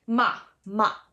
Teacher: the fourth tone is a down tone it is very emphatic